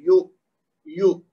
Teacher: یہاں پہ واو مد نہیں پیدا ہوگا، بلکہ اس کو تھوڑا سا جھٹکا دے کے پڑھیں گے، کیونکہ یہ حمزہ ہے تو یو یو، اور پھر میم کے نیچے زیر اور نون کے بعد یہاں پہ یہ واو مد ہے۔